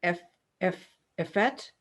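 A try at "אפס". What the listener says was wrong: Fs. So that's a samach.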